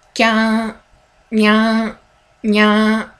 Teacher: instead of your tongue going down for kya, your tongue goes backwards and hits your palate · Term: Palatalization